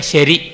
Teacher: ಅವರು ಸರಿ ಅನ್ನೋದನ್ನೇ ಶರಿ ಅಂತ ಹೇಳ್ಬಿಟ್ಟು ಅಂತಾರೆ. ಸಕಾರ ದಂತ್ಯವಾದರೂ ಅದನ್ನು ತಾಲವ್ಯ ಶಕಾರವಾಗಿ ಮಾಡ್ತಾರೆ